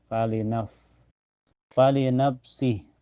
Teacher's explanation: Famantada falinafsihi falinafsi falinaf ini ada fa sukun mutlak mahr fa itu bibir bawah kena gigi seri atas ya dan mempunyai sifat hames ya keluar napas